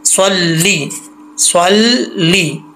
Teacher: स्वाद हरूफ़ मुस्तालिया में से है, मोटा पढ़ेंगे, और लाम के नीचे ज़ेर है, लाम ज़ेर ली होता है, ले नहीं होता, ठीक है, इसको ले नहीं पढ़ना।